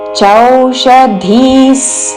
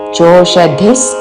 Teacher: చోషధిస్ కాదు చౌ ఔత్వముతో